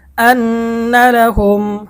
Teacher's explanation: মিম সেকেন্ডের পরে হামজা আসছে, তাহলে মিম সেকেন্ডের ইজহার গুণনা ছাড়া স্পষ্ট পড়তে হবে।